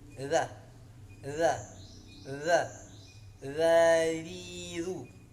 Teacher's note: Huruf ujung lidah bertemu dengan gigi seri bagian atas dua di atasnya. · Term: huruf za yang tipis